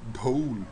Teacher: aspirated D. There are two sounds, neither of which has an English equivalent.